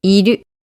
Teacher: iru starts low and it goes up slightly. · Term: pitch accent